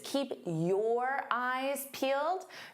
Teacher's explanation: Your can sound very unstressed.